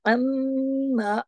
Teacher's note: आइन को आइन की तरह पढ़ा जाता है, हमजा की तरह नहीं, अलिफ की तरह नहीं, आइन गले से पढ़ा जाता है